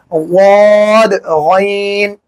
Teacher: गैन हलक का वो हिस्सा जो मुंह की जानिब है वहां से अदा होगा